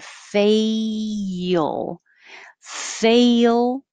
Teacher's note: when you say fail your tongue is going very high